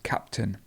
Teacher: the stress is actually at the beginning of the word so it would be captain and it's this schwa again